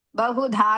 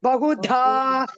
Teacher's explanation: धा is दीर्घ and महाप्राण